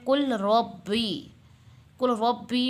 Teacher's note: اب یہ جیسے کہ انہوں نے اگزامپل دی ہوئی ہے کل ربی میں ادغام متقاربین ہو رہا ہے کیونکہ دو حروف قریب المخرج کے لام اور را اس طرح جمع ہوئے ہیں کہ پہلا جو لام و ساکن ہے دوسرا حرف جو را و متحرک ہے، لہٰذا ہم لام ساکن کو را متحرک میں ملا کر مشدد پڑھنے کو ادغام متقاربین کہتے ہیں